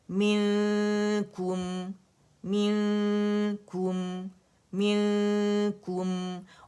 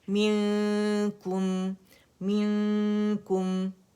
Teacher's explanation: میم میں ہمارے پاس جہر ہے، میم میں ہمارے پاس توسط ہے، میم میں ہمارے پاس استفال ہے، انفتاح ہے، اذلاق ہے، اور غنہ ہے. تو ایک کاؤنٹ کا جو فطری غنہ ہوگا وہ ہم نے شو کرنا ہی کرنا ہے، ٹھیک ہے.